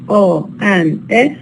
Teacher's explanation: these two sounds o and E are neither High nor low because they are actually mid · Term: mid vowels